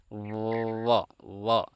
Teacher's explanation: વ એકમાત્ર એવો વ્યંજન છે જેના ઉચ્ચારણ વખતે ઉપરના દાંત અને નીચેના હોઠનો ઉપયોગ થાય છે. આપણે બોલી જોઈએ વ વ એટલે દાંત અને નીચેના ઉપરના દાંત અને નીચેના હોઠનો ઉપયોગ થયો.